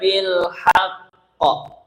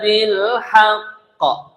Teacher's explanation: di sini bilhaq namanya qalqalah kubra karena tasdid ya